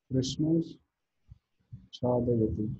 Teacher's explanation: this Visarga converts into the palatal Sha, Talavya Sha